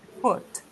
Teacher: Ele é um U sem bico